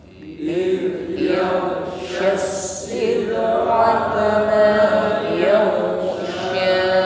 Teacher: dalam mengucapkan dal sukun ya, sifatnya rakhawah. Jarayal sawt 'inda nutqi bil harfi.